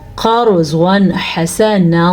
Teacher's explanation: را کو پر پڑھنا ہے کیونکہ را ساکن ہے اور را سے پیچھے زبر ہے. را زبر یا پیش کی صورت میں پر پڑھی جاتی ہے، لیکن اگر را ساکن ہو تو پھر پیچھے والے حرف کا وہی معاملہ دیکھا جائے گا.